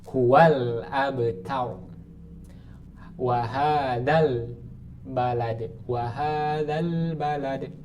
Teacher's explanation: alif lam qamariah atau hukum bacaannya izhar maksudnya izhar Apa dibaca jelas jelas apanya jelas lamnya